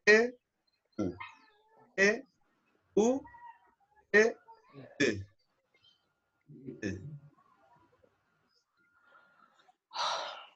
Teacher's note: lo dice con la boca de la E. Entonces, U, E, U, E, U. Y sale la sexta vocal.